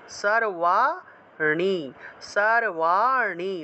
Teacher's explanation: অর্থাৎ মূর্ধা দিয়ে জিহভাটাকে উল্টিয়ে ন উচ্চারণ করতে হয় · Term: মূর্ধন্য, মূর্ধন্যের উচ্চারণ